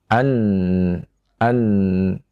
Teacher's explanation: Ini huruf nun yang keluar dari ujung lidah dengan gusi, ya, gigi seri atas. An. Ketika nun kita baca dalam keadaan sukun, maka kita tahan.